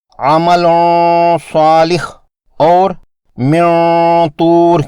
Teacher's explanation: نون ساکن اور تنوین کے بعد صاد اور طا مستعلیہ یعنی موٹے حروف ہیں، یہاں اخفا بھی موٹا ہوگا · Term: موٹا غنہ